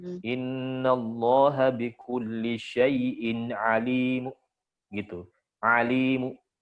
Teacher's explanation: Dibaca dengan arom. Jadi tanwinnya hilang, mu jadi bunyinya.